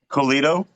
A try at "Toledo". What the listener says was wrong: Toledo with a T. Toledo.